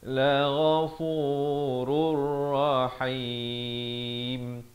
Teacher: Asalnya la ghafurun rahim, tapi di sini bila tanwin bertemu ra, hukumnya masuk tanpa dengung, idgham bila gunnah.